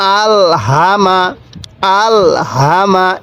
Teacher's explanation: এই হাটি উচ্চারণের সময় মুখ দিয়ে হালকা আওয়াজ করবেন, তাহলে এই হাটি সহি উচ্চারণ হবে